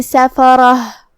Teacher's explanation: कलिमत सफ़रह, सीन पे और फा पे और रा पे ज़बर है, तो ये सब हरकत का ध्यान रहे, हम ये सब हरकत को बराबर से अदा करेंगे, किसी एक को कम नहीं करेंगे। रा पे ज़बर है तो रा का हुक्म है तफ़ख़ीम, हमें रा को भारी आवाज़ में पढ़ना है। आखिर में ता मुदव्वरा पे रुकेंगे तो उस पर जज़म से रुकेंगे, तो हम आखिर में हा पढ़ेंगे।